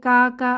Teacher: জিহবার গোড়া থেকে একটু সামনে আগিয়ে তার বরাবর উপরের তালুর সাথে লাগিয়ে উচ্চারিত হয় কাফ। কাফ এটাকে সহজে মনে রাখার জন্য আমরা বলতে পারি পাতি কাক যেভাবে ডাকে কা কা আওয়াজে, তো পাতি কাকের আওয়াজে উচ্চারিত হয় কাফ।